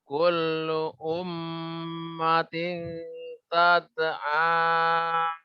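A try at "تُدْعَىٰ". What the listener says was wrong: Tud'a. Dhammah. Tud'a. Tu. Iya, bukan tad'a.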